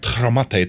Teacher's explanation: In the Spanish version, you don't feel air. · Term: letter T in Spanish